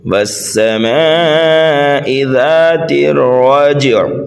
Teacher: والسماء، واو اور سین کے بیچ میں الف لام ہے، یہاں پر حروف شمسی کا قاعدہ پایا جا رہا ہے۔ والسماء یہاں پر جو ہے مد متصل ہوگا اس لیے کہ میم کے بعد الف مدہ ہے، الف مدہ کے بعد حمزہ اسی کلمے میں ہے